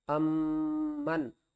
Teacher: ہونٹ جو ہے وہ ہمارے بند ہو جائیں گے اور جو آواز ہے وہ ناک سے آئے گی اور غنے کے ساتھ آئے گی